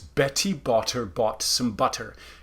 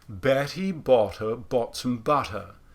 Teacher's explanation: you just take away the aspiration which i talked about previously and then that's what turns it into an equivalent of a voiceless tapped r